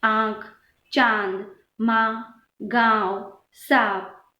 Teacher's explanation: अनुनासिक का उच्चारण नाक और मुंह से किया जाता है